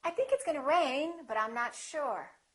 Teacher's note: I see it the second way with my information going up with the pitch going up it sounds like something else is coming like I'm not finished speaking